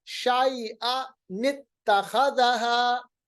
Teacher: ایک زبر کو برقرار رکھیں گے شیئا، دوسری زبر کو نون زیر نی بنائیں گے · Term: نون قطنی